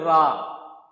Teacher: प्रकंपित क्यों बोलते हैं इसको, प्रकंपित इसलिए बोलते हैं कि जब आप इसको बोलोगे रा, तो जीभ में क्या होगा, कंपन उत्पन्न होगा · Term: प्रकंपित व्यंजन